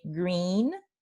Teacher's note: en inglés sí tenemos la vocal I de green, la vocal alta anterior